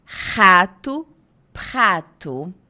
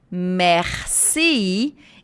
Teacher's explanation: Voilà, é esse o R do francês. Então, o R do francês nunca é da ponta da língua, tá? Ele sempre vem atrás.